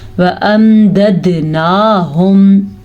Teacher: یہاں پہ قلقلہ ہو رہا ہے کیونکہ دال کے اوپر آ گیا ہے ساکن